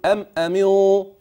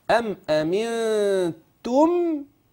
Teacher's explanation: الغنه ترقق لان ما بعدها من تاء مرققه